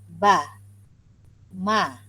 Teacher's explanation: Ba dengan mim merupakan huruf yang makhraj dia sama, iaitu bermakhraj syafawi. Bila kita menyebutkannya melibatkan bibir atas dan bawah.